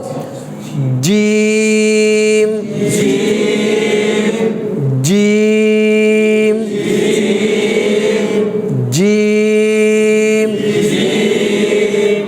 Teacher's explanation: জিমটা হচ্ছে একটু শক্ত হরফ জিহ্বার মধ্যখান উপরের তালুর সাথে লাগবে